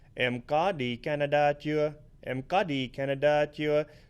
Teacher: notice how we go from flat to the dấu sắc to flat again